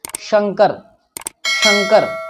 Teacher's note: तालव्य श का उच्चारण तालु की मदद से होता है।